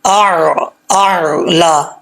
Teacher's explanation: پہلے حمزہ کا ساؤنڈ، حمزہ کی آواز، پھر عین کا ساؤنڈ یعنی عین کی آواز، اعلی، اعلی۔ حمزہ کی آواز سخت ہے، عین کی آواز نرم، پہلے سختی سے پھر عین